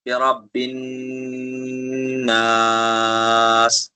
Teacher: نون مشدد کا گنہ ہوگا اور اس کے بعد مد عارض ہوگا